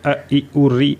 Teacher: हर्ष मतलब कम समय लगना, जब आप इनको बोलते हो तो अ ई उ री आप जल्दी बोल देते हो, इसका समय कम लगता है